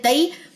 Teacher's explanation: یا خالی ما قبل زبر، یا لین ہے 1.5 سیکنڈ اس کی ڈیوریشن ہے